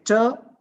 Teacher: we can feel the gush of air coming out it comes out with the kind of sudden explosion so these are uh plosive sounds now when i talk about